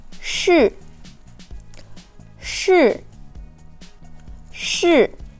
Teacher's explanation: it's real hard falling sound let's say sure with the fourth tone shoot shoot shoot as